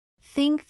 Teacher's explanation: For example, the th sound in think. In this, place your tongue gently between your teeth and blow air out for think